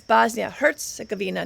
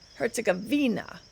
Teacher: Emphasis on the Herz, the first syllable.